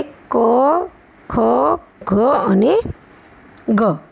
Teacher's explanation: જીભનો પાછળનો ભાગ ઊંચો થઈને કંઠના આગળના ભાગને સ્પર્શે તેને કંઠ્ય વ્યંજન કહીએ છીએ.